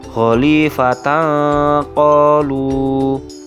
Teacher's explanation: fathah tanwin yang terdapat pada ta marbutoh dibaca samar karena memang bertemu dengan huruf qof yang menjadi salah satu huruf ikhfa kemudian yang terakhir yakni huruf